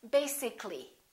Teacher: add a l l y we don't say basi ca li this a disappears so the a is not pronounced and we say basically